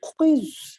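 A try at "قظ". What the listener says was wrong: ہاں اور ضا قاف کے بعد والا حرف پڑھتے وقت زبان کو مکمل باہر نکالیے.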